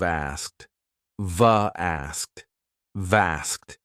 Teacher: Notice, we often drop the K in asked